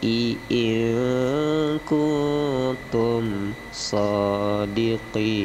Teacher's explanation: Nun mati bertemu kaf itu ikhfa, nun mati bertemu ta itu juga ikhfa, dibaca samar